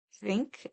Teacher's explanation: the soft TH, like in think, and the soft TH it's almost silent. It's like a breath.